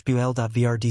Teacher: Boulevard is slash bul.vrd slash. Stress on the first syllable and a soft D at the end.